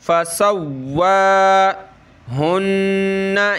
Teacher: تشدید کی وجہ سے واو کو ہم نے سخت کرنا ہے اور کھڑا زبر کی وجہ سے کھینچنا ہے